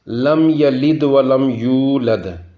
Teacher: میم ساکن کی ظاہر کری تے پڑھساں، یعنی کہ میم بالکل ظاہر ہوئی گی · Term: اظہار شفویہ